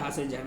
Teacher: यह जो झ है यह आपका महाप्राण है। महाप्राण है क्योंकि इसके उच्चारण में अधिक वायु निकलती है।